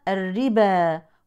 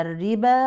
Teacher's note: هذا الالف له المد الطبيعي بمقدار حركتين